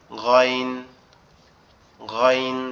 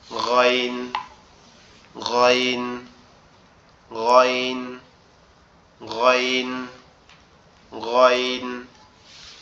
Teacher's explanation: একটু হালকা আওয়াজ মনে হবে, আওয়াজটা গলার ভিতর থেকে বের হয়ে আসতেছে, আওয়াজটা গলার ভিতর থেকে বের হয়ে আসতেছে, এসে উচ্চারণ কেমন হবে, গয়ন গয়ন, এরকম একটা আওয়াজ দিবে, ঠিক আছে ইনশাল্লাহ।